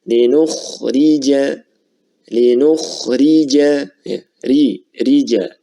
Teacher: Kondisi yang pertama adalah ra yang berharokat kasrah. Jadi ra yang berharokat kasrah maka dia dibaca dengan tipis ya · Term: tarqiq